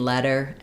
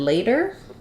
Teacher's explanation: letter has the vowel, like in red, and later has the a diphthong, like in say or day